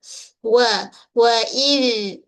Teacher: huruf zal kita keluarkan sedikit hujung lidah sentuh hujung gigi kacip bahagian atas